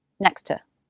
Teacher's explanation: we only need to make one t sound in the phrase next to next to think of dropping the first t sound and connecting